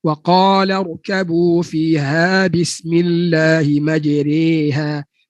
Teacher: Asalnya baris atas majraha, tapi imam kita meriwayatkan bacaan imalah.